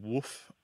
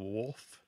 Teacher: one of these terms that's primarily transmitted orally um and so the L kind of disappears it sounds like woof instead of wolf